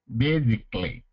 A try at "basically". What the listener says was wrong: Mm-hmm. Good.